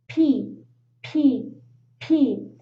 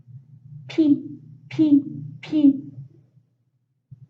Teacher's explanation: If you put your hand in your throat, you will notice that your vocal cords don't vibrate. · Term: voiceless sound